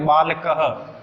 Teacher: एक विसर्ग जो होता है संस्कृत में, इसको अपन ह से उच्चारण करेंगे। जैसे बालक है और पीछे विसर्ग लगा तो क्या बोलेंगे, बालक ह।